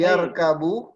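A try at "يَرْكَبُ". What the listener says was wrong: Naam.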